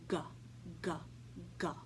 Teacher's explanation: letter G makes and it sounds like this go go go the gurgling sound is made by pulling the back of your tongue all the way up to the top of the back of your mouth · The gurgling sound is one of the sounds that the letter G makes, and it sounds like this: G, G, G. The gurgling sound is made by pulling the back of your tongue all the way up to the top of the back of your mouth. If you say it slowly and pay attention, you can feel the back of your tongue lift up and move backwards toward your uvula, that little thing that hangs down in the back of your mouth. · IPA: /g/